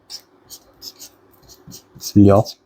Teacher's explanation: It has sounds somewhere between English R and L. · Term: 리을